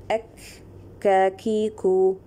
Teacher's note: we are raising the back part of the tongue, the aqsal lisan is raising and touching the junction of the hard palate and the soft palate, but it is istifal. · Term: kaf